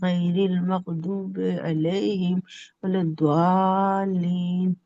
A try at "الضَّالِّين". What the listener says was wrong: ضالین نہیں، ضا ایک دم سیدھا، ضا سیدھا، دعا نہیں۔